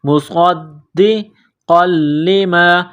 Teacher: صاد کو دال کے ساتھ ملائیں گے، دال کو دبانا ہے، سختی کرنی ہے